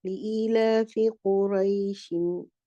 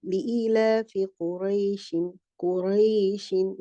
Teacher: So here the قُرَيْشٍ will be the mud harf, the harf ya is a harf leen. So this will be stretched to 1.5 counts.